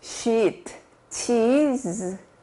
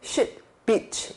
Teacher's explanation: sheet, cheese 이렇게 신경 써서 입을 옆으로 쭉 펼쳐주시는 거고 이거는 shit, beach 이것처럼 좀 욕하듯이 편하게 신경 안 쓰고 툭 이렇게 뱉듯이 이 소리를 내서 이는 입술이 쭉 길어지고요.